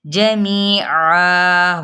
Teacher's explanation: اور یہاں پہ وقف بالابدال کا قاعدہ ہو رہا ہے کیونکہ تنوین زبر ہے اور ہم اس کو 1 الف مدہ کے برابر کھینچیں گے